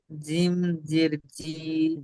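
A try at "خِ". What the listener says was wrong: জিম জের নয়, ওটা খ জের খি। জিমের নিচে থাকে, নক্তা থাকে। খ জের খি।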